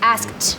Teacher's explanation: Quando o som nesse caso, o som é voiceless, o k. Então, quando o som é voiceless, o ED fica com som de T